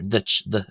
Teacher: the second d in duit is broad. So, you hear duit, d. It's closer to what we think of as a d sound in English.